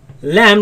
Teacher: my tongue is right after the teeth and you see the sound escapes on the sides